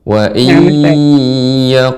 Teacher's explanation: Wa iyaqulu dipanjangkan idgham bi gunnahnya Ibu.